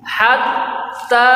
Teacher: Ha membunyikannya adalah napas mengalir dari tenggorokan. Ha napas suara ambil daripada tengah tenggorokan mengalir kepada rongga mulut